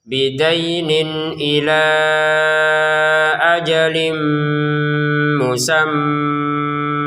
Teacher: Bidain dibaca dengan jelas. Kemudian, 'ila' diperpanjang menjadi lima ketukan karena bertemu dengan hamzah ini. Kemudian untuk pertemuan 'ajalin' mim, kita memasukkan tanwin ke dalam mim.